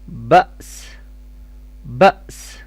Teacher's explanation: با حمزہ فتحہ با، سین کسرتین سن، بأسن، stop sound بأس، بأس، حمزہ کا جرکنگ ساؤنڈ ہوگا اور آگے اینڈ میں سین کا ساؤنڈ ہوگا